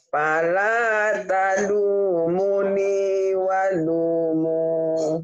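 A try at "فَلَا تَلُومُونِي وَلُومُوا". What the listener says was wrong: Ninya panjang, munya panjang. Ini semua panjang bu, kecuali ta ini. Munya panjang. Munya panjang nih, doma dengan waw mati.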